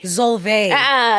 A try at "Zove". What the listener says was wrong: The L is silent. The X is a Z. Yes.